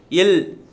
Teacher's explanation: மேல்வாய் பல்லின் அடியை நாக்கின் ஓரங்கள் தடித்து நெருங்குவதால் பிறக்கும் மெய்யெழுத்து